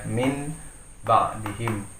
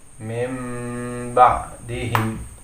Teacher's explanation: Kemudian menjadi iqlab, maka suara nun sukun di sini dia berubah menjadi mim. Jadi membacanya bukan menjadi min lagi, tetapi mim ba'dihim.